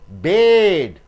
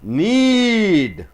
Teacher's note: So, D is a voice consonant. Before D, vowels comes, you are pulling the vowel. You are tensing the vowel. You are giving a high pressure, volume pressure on the vowel.